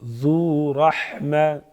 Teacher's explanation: ذو رحمہ ذال نرم پڑھیں گے، رحمہ را پر پڑھیں گے.